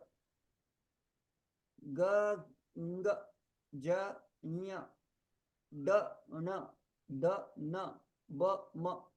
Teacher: They are samvar, nada, ghosh. And they are alpa prani.